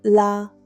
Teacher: It's just 1 syllable, la, falling tone. Say it like you're gently placing something down.